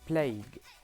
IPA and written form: pleɪg (plague)